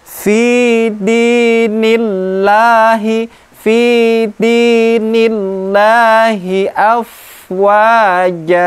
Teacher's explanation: lam jalalah yang diawali dengan harakat kasrah, maka dibaca tipis